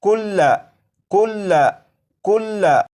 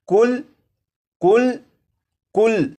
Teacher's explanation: जब इस लफ्ज़ को वक्फ में पढ़ेंगे तो लाम के ऊपर जो ज़बर है इस ज़बर को नहीं पढ़ेंगे और ये लफ्ज़ पढ़ा जाएगा कुल कुल कुल।